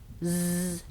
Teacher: a sound like Z is the same sound, but we turn on our voice. So you can actually feel the difference if you put your hand on your throat and you say S or Z.